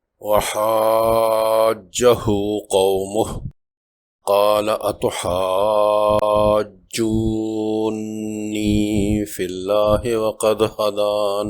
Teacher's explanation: واو مجزوم سے پہلے جیم پر پیش کی وجہ سے واو مدہ ہے، اور فوراً بعد نون مشدد کی وجہ سے یہاں بھی 6 حرکات لمبی مد لازم